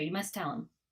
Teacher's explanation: instead of just you must tell him, we're only saying the T once.